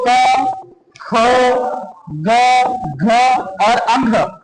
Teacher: व्यंजन की ध्वनियों को उच्चारित करने में जिह्वा के पिछले भाग से कोमल तालु का स्पर्श जहां होता है वहां पर कंठस्थ ध्वनियां होती है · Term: कंठस्थ व्यंजन